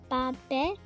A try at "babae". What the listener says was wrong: Oh, we're reading Tagalog, not English. You read it by syllables. Nope. Babae.